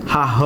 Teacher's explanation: महाप्राण आहे. ज्याचा उच्चार करताना प्राणवायू जोरात बाहेर फेकल्या जातं आहे ना